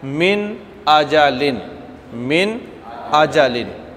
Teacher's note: حمزہ کہاں سے ادا ہوتا ہے؟ انتہائی حلق سے